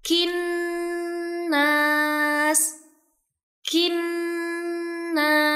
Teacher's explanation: terdapat huruf nun bertasydid lagi yang dibaca gunah atau ditahan dua sampai 3 harakat. Jadi bacanya kinas kinas.